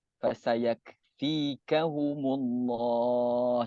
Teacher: kaf kita ni keluarkan angin sikit